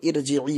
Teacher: را موٹی پڑھی جائے گی، اس لیے کہ یہاں ہم نے زیر عارضی لگائی ہے